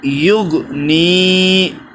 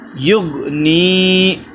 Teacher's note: یہ نی کو کھینچیں گے اس لیے کہ اس میں یا مدہ ہے